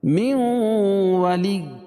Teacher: پڑھا جائے گا، من ولی، اور یہاں ادغام مع الغنہ کیونکہ نون ساکن کے بعد ادغام مع الغنہ کے 4 حرفوں میں سے واو ہو جائے گی تو یہاں غنہ کر کے پڑھیں گے